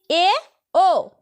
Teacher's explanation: এই দুটি স্বরধ্বনি উচ্চারণের সময় জীভের অগ্রভাগ কিছুটা উপরে থাকে